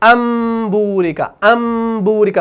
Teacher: ہم اسی میم کو پڑھتے ہیں، نون ساکن کو نہیں پڑھتے لیکن لکھنے میں آتا ہے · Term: اقلاب